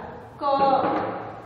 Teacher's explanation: क बोलने में हमारे जिह्वा का पिछला भाग है वह ऊपर की ओर सटता है, बिना सटे उसका उच्चारण क का संभव नहीं हो पाता है। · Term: व्यंजन वर्ण